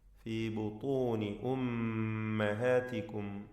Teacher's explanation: മീം മുശദ്ദദ ശബ്ദ നൽകപ്പെട്ട മീം മണിച്ചുകൊണ്ട് ഉച്ചരിക്കുക